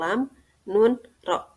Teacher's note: dinamakan idlak karena sebagian hurufnya keluar dari ujung lidah yaitu lam Nun ro